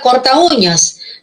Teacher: todo el compuesto vemos que la u conserva el acento y la a perdió su acento perdió su fuerza entonces una abierta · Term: fuerza de voz